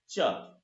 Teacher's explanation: जब हम बोलते हैं च आप बोल कर देखें च तो जिहवा जहां स्पर्श कर रही है वह स्थान तालु है। · च वर्ग का उच्चारण स्थान तालु है।